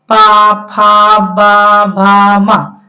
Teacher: पा फ ब भ म सब ओट से बोला जाता है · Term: पा वर्ग